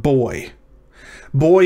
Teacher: the o and the y make two different vowel sounds that converge in a single syllable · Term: diphthongs